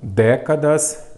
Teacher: é proparoxítona porque a sílaba forte é a antepenúltima